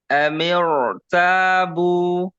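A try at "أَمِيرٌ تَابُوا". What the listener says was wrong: Takrirnya jangan sampai hilang. Amiro. Ada takrir sedikit. Amiro. Tabu.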